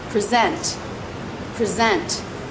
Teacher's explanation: is the noun stress is on the first syllable present but as a verb present present stress is on the second syllable